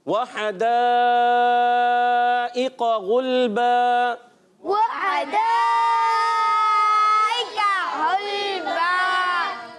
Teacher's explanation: واو ہونٹوں کی گولائی سے